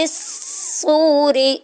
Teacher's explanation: ذرا رک کر پڑھتے ہیں، اور آگے واو ساکن ہے اور واو ساکن سے پہلے پیش آ رہی ہے تو یہاں پہ واو مدہ ہو رہی ہے